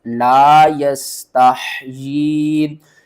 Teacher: یہ اوپر دیکھیں چھوٹی مد ہے، اس کو 3 الف کے برابر کھینچنا ہے، اور یا کے نیچے کھڑی زیر ہے، 3 الف کے برابر کھینچنا ہے کیونکہ اس کے اوپر مد آ رہی ہے